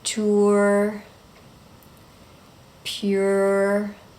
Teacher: you're going to make oo and then er